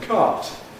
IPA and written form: kaːt (cart)